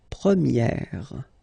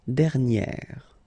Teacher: So it's open, this e sound.